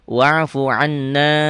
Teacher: Saddah, tasdid. Dibaca double, ditahan dan dengung ke hidung. Itu gunnah. Mim dan nun bertasdid.